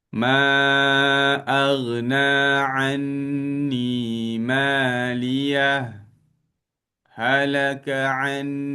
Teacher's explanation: Ah dia ada berhenti sekejap tapi tak ambil nafas kan. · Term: sakta